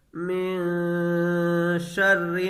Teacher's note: یہاں نون ساکن کے بعد حروف اخفا میں سے شین ہے، تو یہاں نون کی آواز کو ناک میں چھپا کر کے پڑھیں گے، غنہ کر کے پڑھیں گے، من شر نہیں پڑھیں گے۔